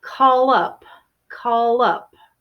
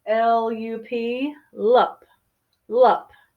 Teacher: what happens is I connect the L with the you